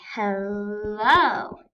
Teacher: there are two syllables next to each other and the second one is stressed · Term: iambic